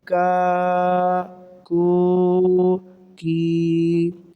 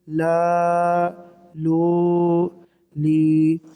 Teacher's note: جی اس قاف کو بھی آپ نے پوری یعنی موٹا پڑھنا ہے، اور ایک الف مدہ کے برابر ان اسباق کو آپ نے لمبا پڑھنا ہے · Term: حروف مدہ